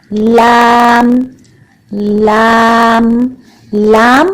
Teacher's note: इन सब के मसूड़े से अच्छी तरह जबान लगाएं तो लाम अदा होगा।